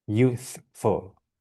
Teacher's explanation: the F is a bit lacking in, sort of, strength, I would say.